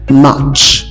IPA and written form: mʌtʃ (much)